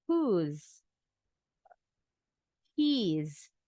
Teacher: In everyday conversation, the native English speakers like to contract words. So they say who is as whose, and he is as his. The S sound like a Z.